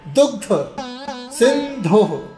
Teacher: दुग्ध, धा पर थोड़ा धक्का लगाइए।